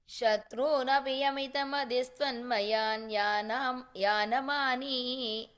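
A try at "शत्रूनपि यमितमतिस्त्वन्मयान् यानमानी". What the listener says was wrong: இல்ல அந்த சத்ருனபிக்கு அப்புறம் there's a pause. So martyan mitrani shatrunapi, pause. Yamitamatiस्त्वन्मयान् yanamani.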